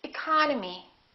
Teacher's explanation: The second syllable is stressed, therefore this E and this O are reduced. We don't say economy, we say economy, economy.